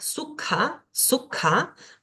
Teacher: Luego tenemos acá la palabra sukha, sukha, una K pero aspirada, K, sukha, que significa fácil.